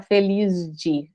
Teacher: Eu tô muito, em vez de muito, lembra aqui, né, que era muito, eu tô muito feliz de, aqui não é porque é escrito com Z, não, é porque aqui é de, ó, então vai ficar feliz de. Você não consegue fazer um s, aqui um som de s, feliz, você tem que fazer um Z e tem uma razão fonológica para isso.